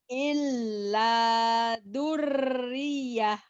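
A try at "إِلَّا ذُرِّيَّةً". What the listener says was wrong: Jangan dur, kan itu ada titiknya. Agak rapuh dikit.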